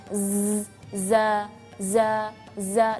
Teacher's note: Jadi kalau safirnya huruf za atau berdesirnya huruf za, sifat huruf za ini safirnya berdesirnya yaitu seperti lebah. Z, za, dan perhatikan lidah kita di dalam.